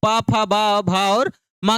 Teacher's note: प फ ब भा और म का उचार स्थान क्या होता है ओट होता है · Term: प वर्ग, ओठ